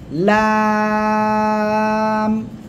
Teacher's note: দাঁত এই যে ঠিক আছে দুই পাশের যেকোনো পাশে লাগালে হবে জিহ্বার আগার কিনারা উপরে মাটির দাঁতের গোড়ার সঙ্গে লাগিয়ে আপনি উচ্চারণ করবেন